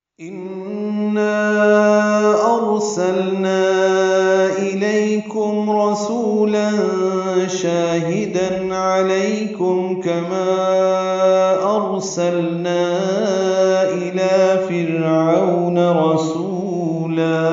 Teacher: الف مدہ کے بعد حمزہ آنے کی وجہ سے اس کو 4 حرکات لمبا کرنا ہے · تنوین کے بعد شین آنے کی وجہ سے اخفا ہوگا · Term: مد منفصل